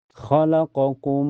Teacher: Cara bacanya mim sukun mim pertama dimasukkan ke mim yang kedua dengan sempurna · Dimasukkan dengan sempurna dan ditahan sampai terasa ke hidung. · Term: idgam mimi, idgam kamil